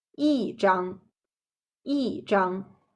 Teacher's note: When E is followed by a syllable in the first, second, or third tone, it changes into the fourth tone. For example, the original sound of the first word should be 一张, right?